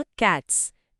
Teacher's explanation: క్యాట్కి ఎస్ చేరిస్తే దాని ఉచ్చారణ క్యాట్స్, ఎస్ శబ్దం. ఇక్కడ క్యాట్ చివర ట అనే వాయిస్లెస్ శబ్దముంది. ఓ, కాబట్టి దానికి జతయ్యే ఎస్ కూడా వాయిస్లెస్ శబ్దంతో పలుకుతాం.